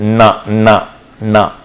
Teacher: Like for example na. So where the excitation coupled to both oral and nasal cavity, but the oral cavity is closed at the teeth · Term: nasal sounds